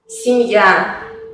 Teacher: en la palabra семья, Y es átona, por eso se pronuncia más como I.